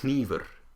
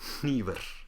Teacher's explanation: Icelandic uses unvoiced nasal consonants, and so you have this awesome word for knife, which is hnífur. You'll also notice that the R should be unvoiced.